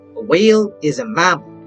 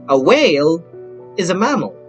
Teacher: the statement has a long falling intonation